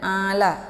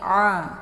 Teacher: pengganti Alif jadi boleh dibaca ya Jangan ala tapi a karena posisi huruf Ain di sini di makharijul huruf halqi bagian tengah bukan dari hidung